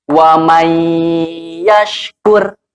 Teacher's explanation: si nunnya itu tidak dibaca, tetapi langsung masuk ke huruf ya dengan ditahan. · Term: idgham bigunnah